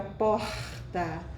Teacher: passa por aqui e eles falam porta porta muito suave tem o r do Rio de Janeiro que já é mais raspado